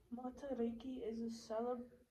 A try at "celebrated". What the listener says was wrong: Put the suffix on. Celebrated. Celebrated.